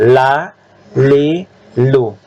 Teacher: la, ujung tepi dengan posisi gusi. Jangan ke gigi. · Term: huruf la